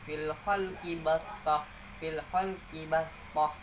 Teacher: Hukum bacaan gharib yaitu shad diganti menjadi sin.